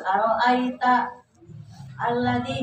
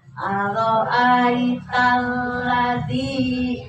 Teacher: langsung ya ditekan ke lam ya jadi enggak diputus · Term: alif lam samsiah